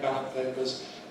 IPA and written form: ˈbæləp ˌpeɪpəz (ballot papers)